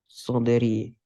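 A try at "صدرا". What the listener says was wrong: it is a maf'ul, but why is it kasra? It's actually sadra. because of this ya, yes, this is mudaf ilaihi. ana makes it, forces it to have a kasrah. is actually a maf'ul, right?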